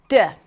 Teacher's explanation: The sound is stopped completely and released. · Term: oral stop sound